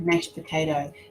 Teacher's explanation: We're still sounding the P, but we're not doing the D.